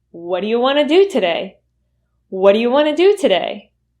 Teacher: keep in mind that we're reducing the do to da · Want to is usually reduced to wanna